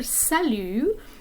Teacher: you have two vowel sounds there the first one being a kind of like father in english